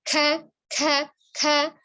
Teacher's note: ka-nya bunyinya itu ada aliran udaranya, ada alhams